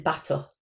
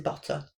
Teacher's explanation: Substitution of a syllabic consonant with a vowel. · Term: vocalization